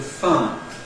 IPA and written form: faə (fire)